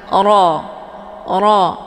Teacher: cara bacanya posisi pangkal lidah juga ikut terangkat ke langit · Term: bacaan tebal